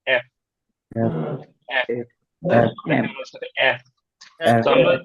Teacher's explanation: >> ওকে দেখা যাচ্ছে একটু দেখেন যখন আমরা বলব তখন আমাদের উপরের দাঁত নিচের ঠোঁটের সাথে লাগবে এবং একটু বাতাস বের হবে নরম করে